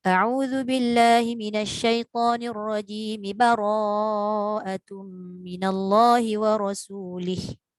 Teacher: isti'adzah itu di akhirnya adalah mim berbaris kasrah. Maka sambungkanlah dengan membunyikan baris kasrah tersebut.